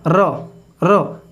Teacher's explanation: र के उच्चारण के समय जीभ में क्या होता है? कंपन होता है। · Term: प्रकंपित